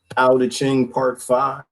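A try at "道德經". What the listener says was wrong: Yeah, it's pronounced like with a D sound. Tao.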